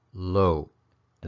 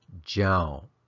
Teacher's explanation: because the first is pronounced low to the second gel so they both finish with that short creaky tone sound